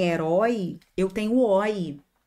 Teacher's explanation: Quando eu trabalho com som oi, o que eu tenho é um ditongo aberto